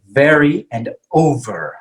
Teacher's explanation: this is similar to the f sound okay in spanish and in english but the v is voiced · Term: v sound